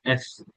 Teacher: এফটা হচ্ছে আপনার উপরের দাঁত নিচের ঠোঁটের সাথে এসে বাজবে। এফ, একটা ছোট একটা সাউন্ড বের হয়, এফ।